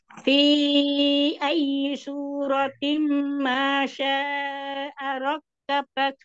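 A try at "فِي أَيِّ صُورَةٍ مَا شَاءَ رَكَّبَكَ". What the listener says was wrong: Nah, ro lebih tebal lagi. idgham di hunanya tim hunahnya lebih panjang sedikit lagi.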